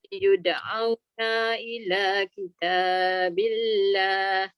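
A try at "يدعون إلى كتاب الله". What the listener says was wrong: Yud'auna ila. Na pendek.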